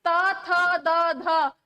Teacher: जीहवा का जो है स्पर्श वो आपके दांतों से हो रहा है।